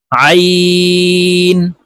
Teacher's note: আইন হরফ হলকের মধ্যখান থেকে চাপ দিয়ে উচ্চারণ করতে হবে।